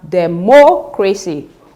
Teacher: Now, in the option C, we have democracy, which means that we have stressed the antepenultimate syllable, that is the third syllable from the end